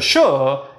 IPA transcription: ʃ